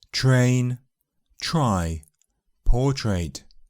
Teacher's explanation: In the cluster, tr, the t can transform into ch. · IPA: /tʃ/